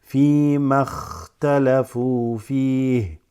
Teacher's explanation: And then look, from the ma, this drops, you're going to go straight from the ma to the kha. And the kha has a sukun.